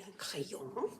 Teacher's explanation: Notice they don't pronounce the N really